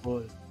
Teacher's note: Una O larga y la boca abierta.